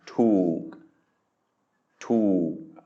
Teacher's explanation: it's a high-class consonant with a long vowel but then a stop final, which means it is a dead syllable, which means it is a low tone